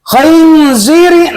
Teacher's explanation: Jadi kho itu dari apa namanya pangkal tenggorokan. Paling atas tenggorokan